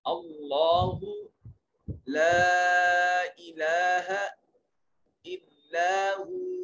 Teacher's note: جلالت کا ما قبل مفتوح ہے، مفخم اور پر کر کے پڑھا جائے گا. لام میں دیکھیے الف خالی از حرکت، ما قبل مفتوح الف مدہ ہے، لام کے اوپر الف المدیہ صغیرہ ہے، ایک الف کے برابر لمبا کریں گے.